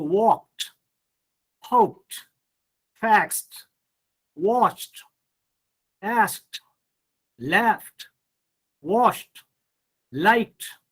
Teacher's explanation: D or ED becomes T after voiceless sound